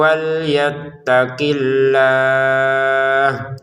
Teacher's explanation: Untuk kata Allahnya kita baca dengan enam harakat karena kita berhenti. Kalau mau dilanjutkan panjangnya dua harakat.